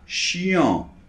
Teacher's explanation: Et dans l'adjectif, quelqu'un, une personne, quelqu'un qui est chiant, c'est la nasale en, comme 1 an, 2 ans, d'accord? Donc on a chiant.